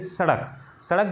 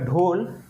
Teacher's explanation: मुर्धा को छूकर झटके के साथ नीचे आ रही है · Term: द्विगुण व्यंजन